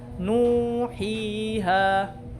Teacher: Or masyadong mahaba, nuhiha. Khata naman yun. Sobra na yung pagmad. Dapat 2 seconds lang. Nuhiha. Yun yung mad at tabi'i.